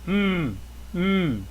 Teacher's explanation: M lips closed vibration in the throat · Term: M sound